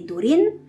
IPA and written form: durin (Durin)